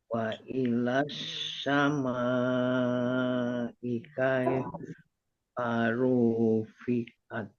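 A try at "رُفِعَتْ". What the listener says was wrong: Nah, tinggal satu aja, ru-nya jangan panjang. Ya, rufiat. Sama ikai farufiat.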